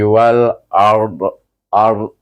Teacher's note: jangan ada lantun ARD tahan aja di situ bunyi ARD jadi bunyi Dad itu bunyi suku saja iaitu lebih kurang satu 25% daripada bunyi dad